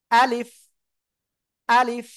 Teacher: আলিফ অক্ষরটা মুখের খালি জায়গা থেকে উচ্চারণ হবে